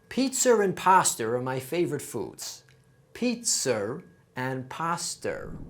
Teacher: if a word ends with a vowel and the following word begins with a vowel we add an extra R sound in between those two